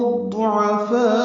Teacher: لام کو الضعفاء کے ضاد سے ملائیں گے، الف لام نہیں پڑھیں گے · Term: ادغام شمسی